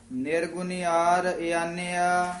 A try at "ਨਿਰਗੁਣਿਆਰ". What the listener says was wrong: ਨਿਰਗੁਣਿਆਰ ਨਹੀਂ ਕਹਿਣਾ, ਨਿਰਗੁਣਿਆਰ। ਨੰਨੇ ਦੀ ਬਿਹਾਰੀ ਜਿਹੜੀ ਹੈ ਦੀਰਘ ਲਾ ਕੇ ਬੋਲਣੀ, ਆਮ ਨਿਰਗੁਣਿਆਰ ਹੀ ਕਹਿ ਜਾਂਦੇ।